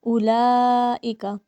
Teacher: لام کے اوپر بڑی مد ہے، اسے ہم 5 الف کے برابر پڑھیں گے